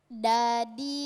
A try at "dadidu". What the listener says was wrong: Ah, kalau da berarti salah. Berarti lidahnya itu menyentuh langit-langit. Da, bukan. Antara gigi atas, gusi dan gigi atas. Da. Da.